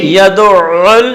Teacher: یدعو میں کوئی سا لفظ نہیں کھینچنا ہے، عین کو ڈبل پڑھنا ہے